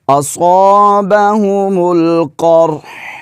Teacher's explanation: را ساکن ہے تو ہا کو بھی ساکن کریں گے اور ہا کو پڑھیں گے بھی. کچھ احباب ایسے پڑھتے ہیں اصابہم القرح تو ہا کو پڑھتے ہی نہیں ہیں.